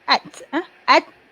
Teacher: huruf ta tempatnya di gusi kacip atas